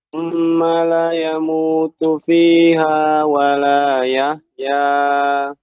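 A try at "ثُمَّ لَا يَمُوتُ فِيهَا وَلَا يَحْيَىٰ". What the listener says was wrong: Perhatikan pada la di sini ada mat Bapak. Summa.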